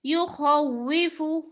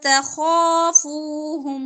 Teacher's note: خا موٹا باقی حروف باریک